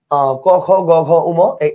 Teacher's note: জিহ্বার মূল অংশটা থেকে এটা উচ্চারিত হয় বিধায় এটাকে আমরা জিহ্বামূলীয় বর্ণ বলব